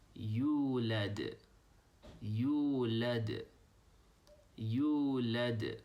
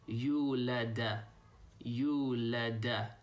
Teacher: the D sound at the end doesn't have an a sound on it